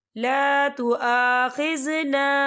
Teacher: یہاں خالل سے پہلے زبر ہے، اس پہ چھوٹی سی مد بھی ہے تو ہم اسے 4 حرکت کی برابر کھینچے پڑھیں گے